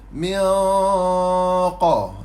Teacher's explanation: Nun mati bertemu dengan huruf qaf, dengung tebal.